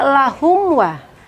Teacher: Selanjutnya lahum wa, mim mati bertemu dengan waw, itu ada izhar syafawi dan tidak dibaca berdengung